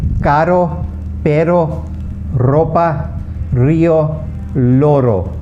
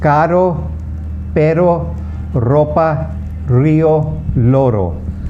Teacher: single R's are pronounced normally like the English R's, but you roll your tongue a little more than we roll them in the English language.